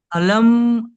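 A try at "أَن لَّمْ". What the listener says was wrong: আলাম কেন হবে লামের উপর তো তাজদি আছে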